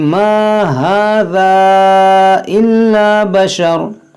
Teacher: यहाँ पर देखें ये भी अलिफ मद्दा है, और ये जो मद है ये मद मुनफसिल है, इसको खींचेंगे 3-4 अलिफ के बराबर